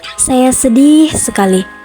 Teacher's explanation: kita memberikan durasi yang lebih lama pada kata sedih, yang mana itu menggambarkan bahwa kita memiliki perasaan sedih yang sangat mendalam.